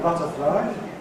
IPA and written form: ˈbʌtəflaɪ (butterfly)